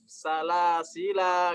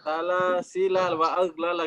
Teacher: Kalau wakaf dibaca panjang, kalau wasol dibaca Pendek.